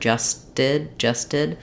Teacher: this T here um is not exactly a flap it's just an unreleased um unaspirated tea because it's part of the s T blend